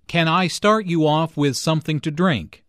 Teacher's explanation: Notice how the question starts with can. Since this is a yes-no question, the intonation rises at the end.